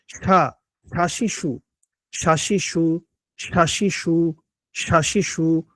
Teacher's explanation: আসন আর সিনে প্যাচ লাগান সিন জবর সা হয় আরশিন জবরশা জিহ্বার মধ্যখান তার বরাবর উপরে তালুর সঙ্গে লাগবে